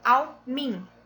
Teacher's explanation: Da vogal A, e você pronunciou ao min. O som ficou de min, desaparecendo o A, e aí nós temos uma elisão quando desaparece o som de alguma letra.